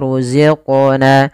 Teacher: pada lafal qaf ada bacaan qalqalah. Yaitu suara qafnya dipantulkan.